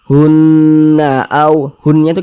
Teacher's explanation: Ini huruf non bertasydid dia, hukumnya gunnah musyaddadah. Cara bacanya digunnahkan, atau didengungkan. Jadi suaranya itu kita tahan, kita panjangkan sejenak.